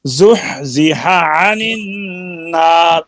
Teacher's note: ہا اور عین ایک مخرج ہے, وسط حلق ادغام نہیں ہوا، متجانسین ہے.